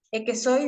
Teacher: la aspiración de la S como una h en posición implosiva hasta llegar a la emisión final de una palabra y esto